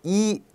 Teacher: 혀가 앞으로 쑥 밀려 나오는 느낌이 분명히 나실 겁니다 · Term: 전설모음